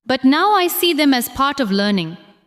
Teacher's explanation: Stress now, see, part, and learning.